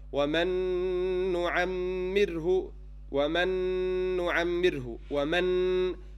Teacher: So, for example, when I say وَمَنْ نُعَمِّرْهُ وَمَنْ نُعَمِّرْهُ وَمَنْ, this noon that you hear is the second noon, and the ghunna you hear is the attribute of the second noon, not the first one. So this is why it's kamil. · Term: complete merging